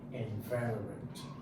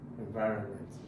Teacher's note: The correct donation to pronounce it, and the stress is on va, environment. See, so the stress is always on the second syllable